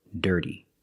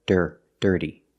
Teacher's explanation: It starts with a D, and we use a real D. With a voice.